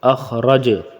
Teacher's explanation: حمزہ خا زبر اخ، خا موٹا ہوگا، را زبر را، اخ را، را بھی موٹا ہوگا، ٹھیک ہے، اخ را، جیم زبر جا، اخ را جا، اس کے را کے اوپر زبر ہے تو را موٹا ہوگا، ٹھیک ہے، اخ را جا وقفن، اخ رج، جیم کے اوپر وقفن میں سکون آ جائے گی تو اس کو کیا قلقلہ کریں گے، جھٹکا دیں گے